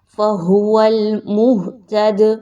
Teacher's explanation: قلقلہ کرتے ہوئے پڑھنا ہے، دال کی آواز کو تھوڑا سا ہلائیے